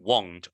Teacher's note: Be careful because won't is a little bit rounded